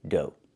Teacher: Make the long O like no and go, and the GH is silent.